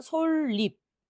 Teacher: 리을 받침 뒤에 첨가되는 니은은 리을이 됩니다요